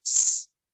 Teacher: The S sound, that is unvoiced. You don't use your vocal cords. It's just the air coming out of your mouth.